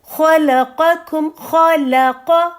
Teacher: خا موٹا ہے اور لام باریک ہے، اور پھر قاف پھر موٹا ہے